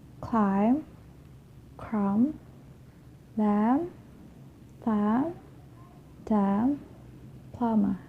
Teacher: So I'm not pronouncing the B, I'm just pronouncing the M consonant sound. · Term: silent letter